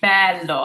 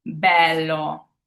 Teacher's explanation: It's more of an open than a closed e.